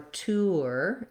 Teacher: there's a little bit of a ooh or w in there